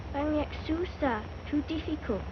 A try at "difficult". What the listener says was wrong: Diff. Not deaf. The word is difficult.